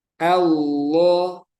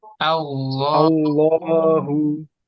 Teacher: Contohnya di sini Allah, A-nya tetap tipis ya. Yang tebal di sini lamnya. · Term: tafkhim